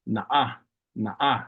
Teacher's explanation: Na'a would just be N-A glottal stop A.